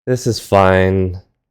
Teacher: you could end the sentence with a flat low pitch throughout